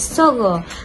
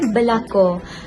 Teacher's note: vokal O itu dikenali sebagai vokal belakang separuh tinggi